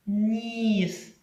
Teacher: він приголосний твердий чи м'який м'який бо його пом'якшує наступний за ним і